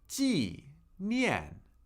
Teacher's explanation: 2 fourth tones, 2 falling tones.